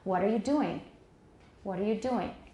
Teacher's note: the most neutral thing is with a falling contour starting on the final stressed syllable · The final content word has the tonic accent, the tonic stress, and it falls.